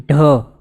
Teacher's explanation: ઢ બોલવા માટે આની અંદર વિશેષ પ્રાણ પૂર્વ જરૂરી છે ત્યારે અંદરથી આપણે બોલી શકીએ એવું છે એમ જ સિમ્પલી બોલવા